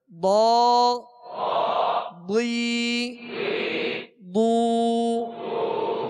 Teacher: مخرج ہے زبان کی کروٹ اور اوپر کے داڑھوں کی جڑ، یہ الٹی جانب سے آسانی سے ادا ہوتا ہے، تو اس کو پر پڑھ دیں، حروف مستعلیہ میں سے ہے۔ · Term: ضاد